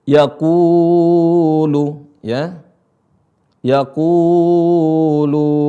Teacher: Ini ada wawu sukun sebelumnya adalah dhammah, maka dibaca panjang.